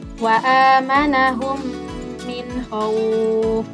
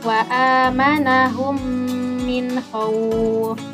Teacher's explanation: Ini bibirnya eh rapat waahum min khauf. Ya, karena mim sukun bertemu dengan huruf mim itu dimasukkan ke dalam huruf berikutnya disertai dengan ee dengung atau ghunah